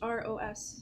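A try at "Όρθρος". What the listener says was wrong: Because most Greeks pronounce it orthos. Orthos means straight up. Orthros means dawn. It is a service of the dawn. Okay. So the R is important. Orthros.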